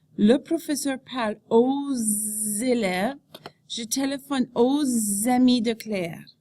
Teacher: there is a liaison after o when the next word begins with the vowel sounds